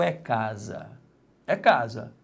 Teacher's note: Então a sílaba tônica é a penúltima.